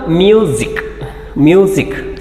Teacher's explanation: ಇಲ್ಲಿ S letter ಇದೆ, sound ಮಾತ್ರ ಜ ಸೌಂಡ್ ಬರ್ತಾ ಇದೆ